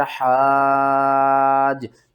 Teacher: اس کو ہم نے 5 الف کے برابر کھینچ کر پڑھنا ہوتا ہے، کیونکہ یہ بڑی مد ہے